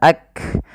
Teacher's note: kaf memiliki sifat salah satunya sifat syiddah. yaitu suara kita tertahan. Ak. Kemudian ada nafas yang dikeluarkan ketika melafalkannya yang di mana kaf juga punya sifat namanya hames.